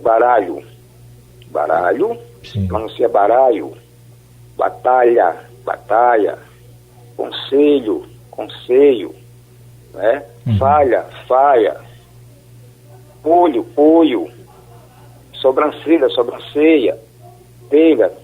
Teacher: pode-se perceber a frequência na substituição do som consonantal LH pelo som vocálico I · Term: assimilação